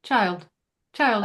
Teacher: it doesn't have that strong Y sound that Y dip in it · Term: the long I sound